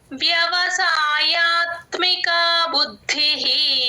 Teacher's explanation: వ్యవసాయాత్మిక వ్యవసాయాత్మిక బుద్ధిహి ద కింద ద వత్తు మహా ప్రాణం ఉంది గమనించండి బుద్ధిహి విసర్గ హి అవుతుంది